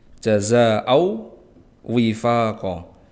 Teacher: Jazaa'an wifaqa, ada tanwin yang bertemu dengan waw, huruf waw, maka hukum bacaan dari ini adalah idgham bi gunnah, karena ada tanwin bertemu dengan waw, maka cara bacanya dileburkan, tanwinnya dileburkan ke huruf waw